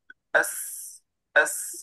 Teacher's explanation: sin lidah betul-betul ke arah bawah. Okey, lalu ada satu angin yang keluar di antara gigi atas dengan gigi bawah. Okey, dia keluar di celah-celahan tersebut. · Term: sofir